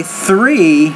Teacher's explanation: that's an interdental consonant so you gotta get the tongue between your teeth